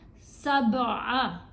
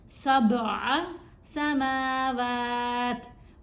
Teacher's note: اگر آپ اپنے لپس کو کلوز کر لیں گے تو پھر کلکلا ادا نہیں ہوگا. آپ نے با کو ہلا کر پڑھنا ہے